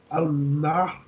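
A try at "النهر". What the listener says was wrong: An-Nahru. Lam is silent because there is Shadda on Noon. So, An-Nahru.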